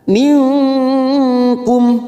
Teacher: nun sukun bertemu Kaf warna hijau ini namanya bacaan Ikfa Hakiki kita samarkan bunyi nun sukun tiga harakat